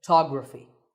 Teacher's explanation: the first syllable becomes ph, and the stress goes to the second syllable, photography.